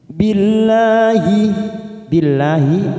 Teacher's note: lam jalalah yang didahului kasroh, maka kita baca tarqiq tipis.